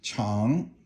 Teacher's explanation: Chang is third tone, and it means a cliff